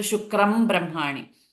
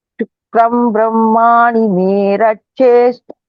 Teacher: So the sound will not change because Anuswara followed by Papha Bapha Ma. This Anuswara keeps the sound as Ma.